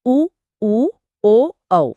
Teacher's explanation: उ ओ औ वृत्त मुखी मतलब जिनके उच्चारण में होठ गोल हो जाते हैं